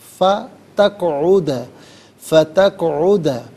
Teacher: क़ाफ़ साकिन है, हरफ कलकला है तो आवाज़ लौटती भी महसूस होनी चाहिए